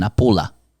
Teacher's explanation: with short syllables and finishing with a schwa sound